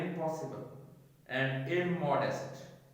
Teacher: Before vowels and before morphemes beginning with T or D, the Homogeneic nasal rule has no effect on the basic form. The rule changes the alveolar feature of N to labial before a morpheme beginning with a labial consonant P, B or M